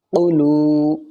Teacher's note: واو ساکن سے پہلے لام کے اوپر پیش ہے تو واو مدہ ہوگا، تھوڑا کھچ کر پڑھا جائے گا